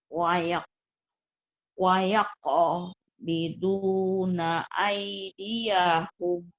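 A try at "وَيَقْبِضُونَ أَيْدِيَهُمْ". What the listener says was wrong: Kolkolahnya Bu.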